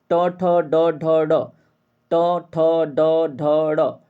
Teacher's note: ड ढ ड तो देखिए जीभ धीरे-धीरे क्या हो रही है ट जब बोल रहे हैं तो धीरे से आगे आ रही है कहां पे मोटे मसूड़े पे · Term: ट वर्ग